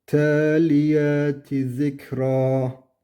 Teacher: Zikra raı bir elif miktarı uzatarak duruyoruz.